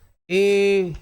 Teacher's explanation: कंठ तालव्य, क्योंकि इनका उच्चारण कंठ और तालु दोनों से हो रहा है। ए, यहां से भी आवाज आएगी, यहां से भी ऊपर टकराएगी, ध्यान रखना, मूर्धा से भी, तब आपकी बनेगी ए और ए।